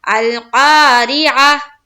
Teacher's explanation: یہ میں نے آپ لوگوں کو پہلے بھی بتایا ہے سورہ ہمزہ میں، جب ہم سورہ ہمزہ پڑھ رہے تھے تو وہاں پر بھی یہ گول تا آئی تھی اور وہاں پر وقف کرنا تھا۔ تو گول تا پر جب بھی وقف کریں گے تو ہم اسے ہا بنا دیں گے اور اس کے اوپر جزم لائیں گے، تو ہو جائے گا القاریعہ۔ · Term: ہائے ساکینہ